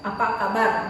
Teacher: dan eh intonasinya naik di akhir kalimat apa kabar Kan naik tuh apa kabar jadi Naik eh intonasinya